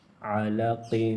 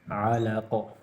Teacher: عین زبر ع لام زبر ل عل قاف دو زیر قن علق. آخر میں دو زیر ہے تو حالت وقف میں جزم پڑھا جائے گا اور قلقلہ بھی کیا جائے گا. وقفاً علق.